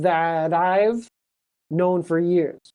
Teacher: that I links together. Bruno is a friend that I've known for years.